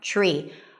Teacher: TR together turn into a ch sound.